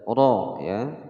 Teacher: roknya disini hukumnya adalah rok tafkhim dibaca tebal